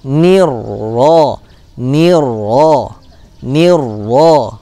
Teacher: lam sakinahnya tidak dibaca, masuk ke dalam huruf ro. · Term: idgham syamsiyah